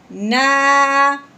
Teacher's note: کیا پڑھا ہے کہ الف سے پہلے جب بھی زبر آ جائے تو ہم نے اس حرف کو ایک الف کے برابر لمبا کرنا ہے. اب ہم نے نون کو ایک الف کے برابر لمبا کرنا ہے، کیوں؟ الف سے پہلے زبر آنے کی وجہ سے.